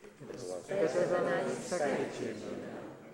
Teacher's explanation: Notice the weak form of was better, characteristically used in an unstressed position.